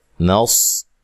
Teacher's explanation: صاد کو خوب موٹا ادا کرنا ہے لیکن ہلانا نہیں ہے۔ حروف قلقلہ کے سوا کسی کو بھی حالت جزم میں ہلایا نہیں جاتا۔